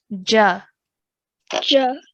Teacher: we are going to open our mouth and our sound is going upwards and lasting for 1 count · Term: fatha